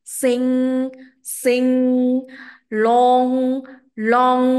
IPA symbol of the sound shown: ŋ